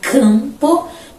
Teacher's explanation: Na verdade o m é só um registro para que a gente lembre que as palavras são nasalizadas · O M e o N só são representações mesmo desse som mais nasalizado.